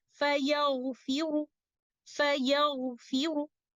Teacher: But when applying the rule of a Rawm, upon stopping on this word, we will recite letter Ra with tafkhim. Letter Ra will be heavy because we are going to recite a vowel of letter Ra by giving 1/3 of the full length of Dhamma, and this is how we will recite it.